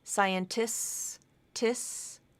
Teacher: So similar to the SKS ending, here STS, you can drop that middle T. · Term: STS ending